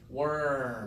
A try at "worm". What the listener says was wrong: That's it.